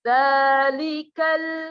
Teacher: ada la sukun, harus hati-hati jangan sampai tawallud. Kita harus nahan. Zalikal, jangan zalikal ya, kebanyakan.